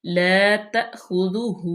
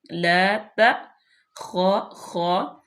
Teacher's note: حمزہ جو ہے اس پہ وہ جزم ہے تو یہاں پہ جھٹکا دیں گے، لا تا خا خا، ایسے خا کا مخرج ادا کرتے ہوئے کھرکھری سی پیدا کرتے ہیں۔